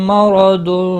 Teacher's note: را زبر کی وجہ سے پر پڑھا جائے گا